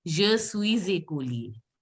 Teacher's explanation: Now I am telling you to pronounce it as je suis écolier. It should be the Z sound. Z sound, because here this écolier begins with a vowel. So you have to say je suis.